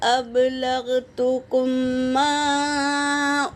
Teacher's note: میم ساکن کے بعد میم آیا ہے تو پہلے میم کو دوسرے میم میں ملا کر غنّے کے ساتھ پڑھیں گے، اسے ادغام شفوی کہتے ہیں۔ اور میم پر مد ہے، مد منفصل، 3 سے 4 الف کی مقدار کھینچیں گے۔